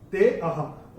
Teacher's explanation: ते को थोड़ा सा खींच के बोलेंगे